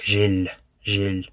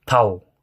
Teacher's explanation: То есть там тоже как бы пишется ж, е, л, но как будто бы там после л есть мягкий знак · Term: Л с мягким знаком